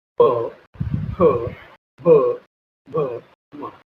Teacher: ओष्ठव्य मतलब होठ का यूज करके हम वर्ड को बोलते हैं, इस वर्णों को बोलते हैं।